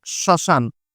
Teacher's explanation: ম ফলার উচ্চারণটা কিন্তু আমরা করিনি ম ফলার কোন কাজই নেই কিন্তু যেহেতু ম ফল আর ম